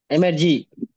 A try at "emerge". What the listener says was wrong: Emerge, not emergy. Emerge.